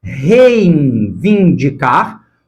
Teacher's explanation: nasalizando as vogais, né, o ditongo que está na primeira sílaba